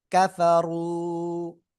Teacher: পেশ আসছে। জবর বা পেশ হলে র অক্ষরটা কেমন হবে? মোটা আওয়াজে পড়তে হবে।